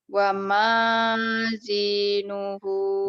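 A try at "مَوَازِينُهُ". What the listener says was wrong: mawa terbalik. Mawazinuhu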